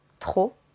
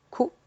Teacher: At the end of words, and just like other consonants, or the majority of consonants, the letter P is barely pronounced. Trop, for example, there is a P.